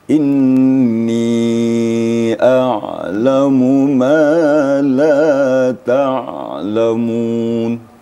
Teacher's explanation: Huruf ain apabila dia sukun, maka timbul sifat mutawasitnya. Mutawassit artinya pertengahan. Tidak syiddah dan tidak pula rakhawa. Artinya tidak mengalir suaranya, tidak pula terputus.